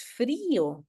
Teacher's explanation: porque he roto el diptongo para poder pronunciar frío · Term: yato acentual